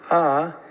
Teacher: La larga con tono alto A.